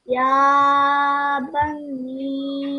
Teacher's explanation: So Ya will be 2 seconds, then Ba 1 second, then Ni will be a bit longer. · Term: madda